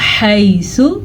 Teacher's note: सा को लंबा नहीं करेंगे, सा के ऊपर पेश की वजह से